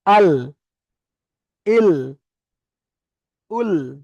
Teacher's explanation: জিভের আগাটা সামনের উপরের দুই পাশে দাঁতের গোড়ায় লাগছে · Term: লাম